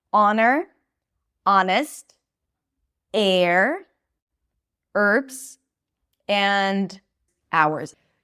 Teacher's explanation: So, we have these five words that have an H at the beginning, but we don't pronounce it.